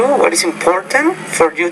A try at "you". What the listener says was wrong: Okay, now the word you, it's not you, but you're almost saying it with a J, not a Y, but it's you, your, yes.